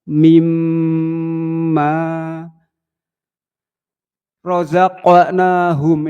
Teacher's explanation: Gunnah dibaca dengung. Gunnah musyaddadah. Ini ditahan sampai 3 ketukan.